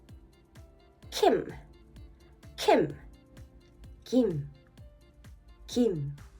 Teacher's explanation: Your tongue touches the back of the mouth, the soft pallet. Now, English K, if voiceless and strong, your vocal cords don't vibrate